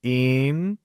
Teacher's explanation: So it will be like doing this, important. Understanding the word stress here is placed in the second syllable.